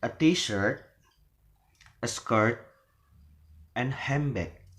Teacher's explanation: So when we say a t-shirt, a skirt, so it is rising, then a handbag, it is falling.